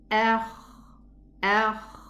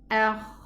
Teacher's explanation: The kha also have this running characteristic, which is soft, it runs. Akh. And it also has this whispering sound.